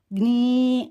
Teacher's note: జ్ఞీ అని ముక్కుతో అనునాసిక ధ్వని వచ్చేలా పలకాలన్నమాట